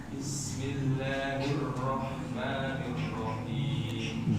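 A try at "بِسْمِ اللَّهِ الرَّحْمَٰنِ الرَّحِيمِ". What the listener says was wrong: Bi. Ba-nya kurang jelas. Bi.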